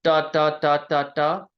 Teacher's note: The only difference is Gujarati da, you curl the tip of your tongue back a tiny bit. If you're interested in what the technical word for that, it's a retroflex sound.